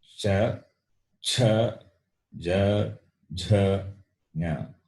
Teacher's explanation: Then the second class we saw, which are talavya, meaning palatals. They are pronounced by the tongue touching the palate, the middle portion of the mouth.